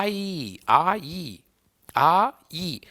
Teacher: ಎರಡು ಸೌಂಡ್ ಇದಾವಲ್ಲಿ ಅಂದ್ರೆ ಎರಡು ಮಾತ್ರೆ ಕಾಲ ದಲ್ಲಿ ಉಚ್ಚಾರ ಮಾಡ್ತೇವಲ್ಲ ಎರಡು ಅ ನಿಂದ ಶುರುವಾಗಿ ಇ ನಿಂದ ಎಂಡ್ ಆಗುತ್ತೆ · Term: ಸಂಧ್ಯಾಕ್ಷರಗಳು